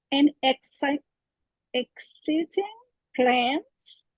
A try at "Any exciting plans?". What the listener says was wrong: And don't leave off the E. Any. Any.